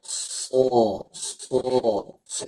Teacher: pangkal lidahnya naik, lidahnya nempel ke langit-langit. Huruf shad.